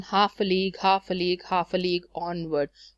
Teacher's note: you're using stressed unstressed unstressed stressed unstressed unstressed · three syllables in which the first one is stressed followed by second and third unstressed syllable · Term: galloping meter